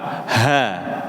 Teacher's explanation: Huruf ha itu keluar dari tenggorokan paling bawah, Pak.